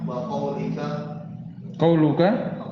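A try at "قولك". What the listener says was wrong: enggak ada wawunya.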